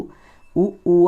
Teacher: ఉ ఊ అనేటప్పుడు పెదవులను కొంచెం ముందుకు చాచి చెప్పాల్సి ఉంటుంది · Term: ఓష్ట్యాలు